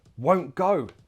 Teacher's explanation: she kept the back of the mouth more closed, tongue was relaxed, the lips did all the talking